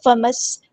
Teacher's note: جماؤ کے ساتھ، فَمَسْتَيْسَرَ مِنَ الْهَدْيِ، یہاں پہ آپ دیکھیں فمس، میم کو ہم نے سین کے ساتھ ملا دینا ہے، حمزۃ الوصل ہمارا ڈراپ ہو جائے گا ، سین کی سیٹی ہم نے واضح کرنی ہے، ہم اس